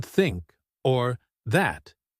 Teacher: The th sound is special because we put our tongue between our teeth. We push out a small bit of air.